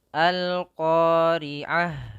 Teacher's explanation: makhrojnya adalah dari pangkal lidah kita bertemu dengan langit-langit atas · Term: huruf qof